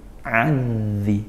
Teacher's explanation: Zal itu makhrajnya di ujung lidah bertemu ujung gigi seri atas. Bertemu ujung gigi seri atas, di situ. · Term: zal tasydid